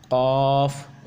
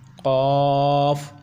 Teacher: यह पहला काफ मोटा पुर पढ़ेंगे और दूसरा काफ है बारीक